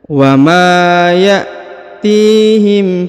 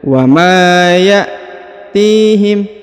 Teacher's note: Perhatikan wa ma, huruf ma dipanjangkan 2 harokat karena di depannya terdapat alif ya. Wa ma ya'tihim.